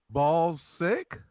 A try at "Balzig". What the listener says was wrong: You know, no, with a G, but you pronounce it a hard G. Balzic.